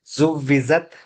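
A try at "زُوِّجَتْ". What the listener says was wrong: జ కాదు జా రావాలి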